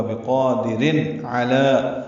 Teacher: عین وسط حلق سے ادا ہوگا